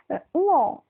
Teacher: ঙ কথাটা যখন বলছি তখন কিন্তু আমাদের আওয়াজটা একটু নাক দিয়ে বেরোচ্ছে। নাক যদি স্পর্শ না করি তাহলে কিন্তু ঙ উচ্চারণ করতে পারবো না। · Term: নাসিক্য ধ্বনি